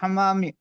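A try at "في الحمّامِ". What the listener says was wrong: फिल हम्मामी, हमामी नहीं, हम्मामी, फिल हम्मामी।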